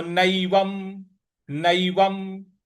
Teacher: न पर ऐ की मात्रा और व पर जो अनुस्वार है उसका उच्चारण हमें म ले आना है